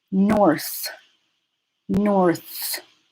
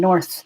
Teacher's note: This is one syllable. It ends on the TH sound that is voiceless. So if you feel it in your throat, you'll feel the vocalizing drop off, like you'll feel the vibrations drop off for the end.